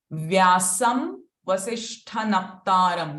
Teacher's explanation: So again, the Anuswara is followed by V. So it will become V itself.